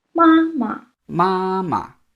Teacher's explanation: the first one keeps its original tone, but the second one changes to a neutral tone · Even though it's the same 2 characters, ma 2 times, it's mama. The second one becomes a neutral tone. Now, the sound of the neutral tone will change based on the character that's before it, the tone of the word before it.